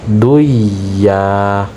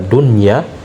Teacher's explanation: nun sukun bertemu dengan huruf ya, maka tidak boleh kita idghamkan